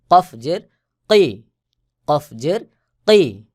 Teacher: কফের আওয়াজ শক্ত করে গোলমত হয়ে উচ্চারণ হবে